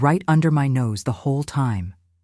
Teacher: When practicing, stress nose lightly to highlight the emphasis Americans naturally place on the last word of the phrase.